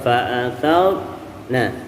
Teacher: ini huruf ra sukun didahului oleh huruf yang berharokatkan fathah, dibaca tebal ya. Fa'atharna, bukan fa'atharna.